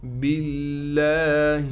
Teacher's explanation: باللہ، با کو لام سے ملائیں گے اور لفظ اللہ کا لام باریک پڑھیں گے بالکل. لام پر کڑا زبر ہونے کی وجہ سے لام کو کھینچیں گے بھی، اور لام پر تشدید ہونے کی وجہ سے لام پر ٹھہراؤ کیا جائے گا.